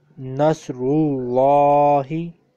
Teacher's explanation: you will have to merge Lam with Ra